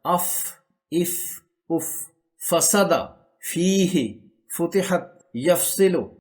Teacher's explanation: ऊपर वाले सामने के दांत की नोक जब निचले होठ के तर हिस्से से मिलती है तो फा अदा होता है · اوپر والے سامنے کے دانت کی نوک جب نچلے ہونٹ کے تر حصے سے ملتی ہے تو فا ادا ہوتا ہے۔ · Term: فا کا مخرج